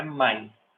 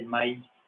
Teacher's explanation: Então, leva um acento ali, porque aqui, ó, duas sílabas com uma vogal aberta e uma fechada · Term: hiato